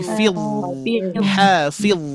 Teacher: huruf d itu adalah ujung lidah menempel ke gigi seri atas